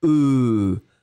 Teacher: Donc le F n'est pas prononcé, le S n'est pas prononcé. Finalement, vous prononcez une sorte de E, U qui est assez grave.